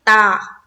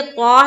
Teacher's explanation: تا کو باریک ادا کرتے ہیں اور اس کو منہ بھر کر بولتے ہیں تو کو